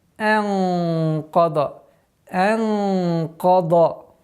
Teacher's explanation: Каф твердый звук, после которого идет дад, тоже твердый. Но ихфа здесь должно подчиняться звуку каф и должно быть твердым.